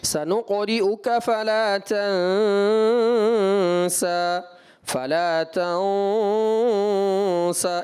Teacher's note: غنہ کے بعد جو سبب آ رہا ہے سین کا اخفا کا، تو وہاں پر آپ نے غنے کو باریک رکھنا ہے